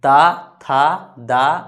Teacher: बोलिए ता वर्ग को, जीभ जो है दांत में सटेगा, दांत में।